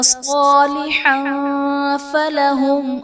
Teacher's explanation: تنوین کے بعد حروف اخفاء میں سے فا ہے تو یہاں پر اخفاء کا قاعدہ ہوگا، یعنی تنوین میں ہم غنہ کر کے پڑھیں گے